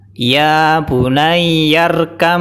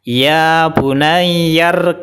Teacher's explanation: depannya ada mimnya maka qolqolahnya atau pantulannya hilang jadi cara bacanya Mbak sukun langsung dimasukkan ke mim tanpa Qalqalah jadi qolqolahnya hilang bacaan yang benar adalah iya bunayyarkam jadi langsung dimasukkan ya tanpa